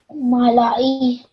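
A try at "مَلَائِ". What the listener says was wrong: Yeah, it malai.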